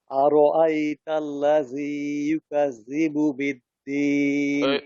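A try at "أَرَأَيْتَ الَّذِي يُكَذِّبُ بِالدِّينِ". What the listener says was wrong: ওই জালের উচ্চারণ গুলা শক্ত হয়ে যাচ্ছে, এটা নরম। আরাআইতাল্লাযী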